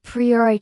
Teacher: And English learners almost always say pry- o- rash- thai with stress on the third syllable. When native speakers say priorai with clear stress on the second syllable